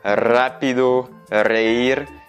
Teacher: tu vas pouvoir accentuer beaucoup plus le R quand il est au début de la phrase.